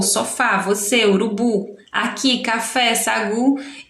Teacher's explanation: palavras oxítonas que são aquelas em que a sílaba mais forte é sempre a última